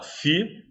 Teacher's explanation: Eu tenho um hiato, do I para o A, e tenho até um ditongo fonético, porque esse AL o L tem som de U, então acaba formando um ditongo.